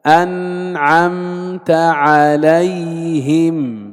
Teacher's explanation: لاحظ كيف نؤدي الإظهار، لا إطالة للغنة